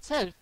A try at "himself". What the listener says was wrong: himself. It sounded like himself. You forgot the f at the end. Himself. Yeah, you got to get the f in.